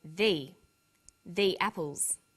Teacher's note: when the comes before a vowel sound we say thee the apples so they before vowel sounds and the before consonant